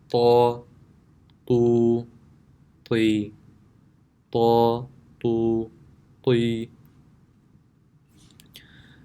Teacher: The makhraj of Ta is the tip of the tongue when touching the roots of the upper two front teeth.